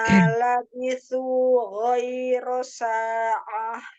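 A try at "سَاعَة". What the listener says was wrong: Iya, huruf ainnya coba. Jangan sa'ah. Nah, jangan berat di ainnya. Sa'ah.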